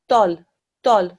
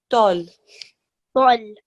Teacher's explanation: Okay, this is a thick sounding letter, tol, tol. So round your mouth, the tip of your tongue goes just behind your front two teeth and touches the gum.